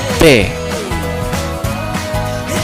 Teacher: like an explosion in our lips before we say it